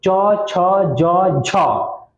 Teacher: तालव्य वर्ण मतलब तालु, तालु से उसका उच्चारण होता है